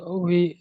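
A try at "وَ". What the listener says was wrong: আচ্ছা, ওয়াও বি বলছেন, ওটা তো জের হলে তাহলে বি হয়। ওয়াও জের হলে বি হয়। হ্যাঁ, ওয়াও জের হলে বি হবে। এখানে ওয়াও আলিফ জাবার অ, এমন ভাবে উচ্চারণ হবে ওয়া।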